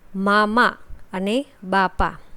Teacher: મામા અને બાપા શબ્દનો ઉચ્ચાર કરવા હોઠ અડાળવા જ પડે છે